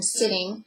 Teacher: it is a lingua alveolar fricative and it is voiceless so the vocal folds will not vibrate but air will pass through up into the vocal tract the